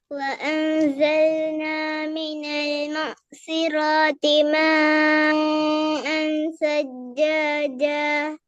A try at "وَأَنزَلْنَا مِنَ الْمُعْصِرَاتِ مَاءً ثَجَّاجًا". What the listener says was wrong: மீம நீட்டுறது போதாது. மீம் எத்தனை செகண்ட் நீட்டணும்? எத்தனை அளவு நீட்டணும் சொல்லுங்க. மீம